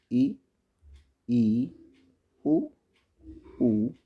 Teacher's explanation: संवर्त में जिन स्वरों के उच्चारण में मुख द्वार लगभग बंद रहता है, उन्हें संवर्त स्वर कहते हैं।